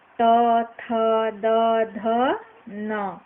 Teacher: अब टवर्ग, ट, ठ, ड, ढ, ड़, यह सब टवर्ग के अंतर्गत आता है, जिसका उच्चारण मूर्धन्य से किया जाता है। अब तवर्ग, तवर्ग का उच्चारण किया जाता है दोस्तों दंत से